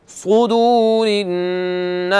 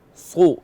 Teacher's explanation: صاد اس کو موٹا کرنا ہے، سو نہیں ہے، سین نہیں ہے، صاد ہے، موٹا، آواز موٹی ہونی چاہیے